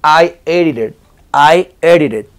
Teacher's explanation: también está la t en medio de dos vocales eso se convierte en r